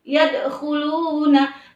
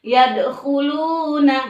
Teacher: Sebab nanti qalqalah terbagi menjadi 2, ada qalqalah kubra, ada qalqalah sughra, ya. Jadi bacanya harus dimantulkan, yadkhuluna, tapi dimantulkannya sedang saja, jangan terlalu tidak terlalu seperti itu.